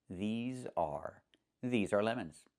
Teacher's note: Make sure you make the long e sound like green beans. These plus the z sound like in zebra and zipper z with a voice